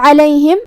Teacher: ہم عین کو حلق کے درمیان والے حصے سے ادا کریں گے۔ آخری میں میم پہ پیش ہے، تو ہمیں میم کو پیش سے ادا کرنا ہے اور اسے ظاہر کرنا ہے۔ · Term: حرف العین